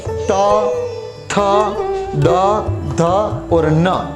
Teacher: उसके बाद आता है दंत्य। दंत यानी दांत से हमारी जीभ है वो दांत को टच करेगी